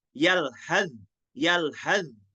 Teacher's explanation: Harus dibaca idgham ke za. Nggak boleh tersembunyi sa-nya. Harus diidghamkan ke huruf zal.